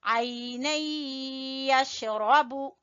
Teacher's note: یہاں غنہ ہوگا ادغام بالغنہ